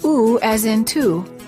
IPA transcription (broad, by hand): u